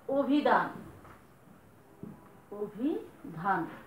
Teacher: স্বর অ এর উচ্চারণ ও এর মতো হয়ে যাবে বা সংবৃত রূপে উচ্চারিত হবে। যেমন ধরেন আমি বললাম অভিধান, অভিধান, স্বর ও পেয়েছি, রস্বইকার আছে, উচ্চারণটা হয়ে যাবে এরকম অভিধান।